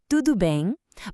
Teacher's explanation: Listen to how my voice goes up at the end. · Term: question mark sound